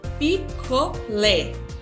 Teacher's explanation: A sílaba tônica ficou o lé